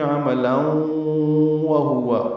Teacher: لام پر 2 زبریں ہیں، لن تنوین ہے اور اس کے بعد واو آیا ہے، ملانے کی صورت میں عملا وہوا پڑھنا ہوگا، یعنی ادغام کرنا ہوگا